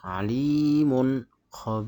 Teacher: jadi tanwin mati bertemu dengan huruf ha cara bacanya suara nun mati dibaca jelas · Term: bacaan izhar